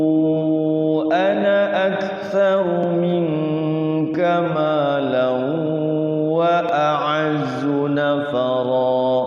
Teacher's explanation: Nah, waqaf di ana itu panjang kalau waqaf di ana. Tapi kalau di wasol ana itu selama-lamanya pendek, tidak boleh panjang.